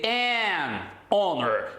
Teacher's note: Agora, se porventura você estiver fazendo referência à palavra honor, que é honra em inglês, observem a pronúncia, honor. Esse H é um H mudo. Então, nesse caso, você vai dizer an honor e não a honor, tudo bem?